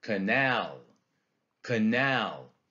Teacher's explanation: It's a foot with an unstressed syllable followed by a stressed syllable. Okay? Unstressed, stressed. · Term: iamb